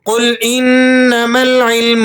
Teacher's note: قل انما العلم عند اللہ، قل انما العلم، قاف کو آپ نے پر کر کے ادا کرنا ہے، نون مشدد ہے تو یہاں آپ نے غنہ ادا کرنا ہے، عین کو آپ نے حلق سے ادا کرنا ہے۔